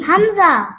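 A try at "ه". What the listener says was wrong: It spells the same, but we have to read it deeply. Deeply from the last part of the throat. For example, this is your face, right? This is the first part, this is the second part, this is the last part. From there you have to pronounce it deeply.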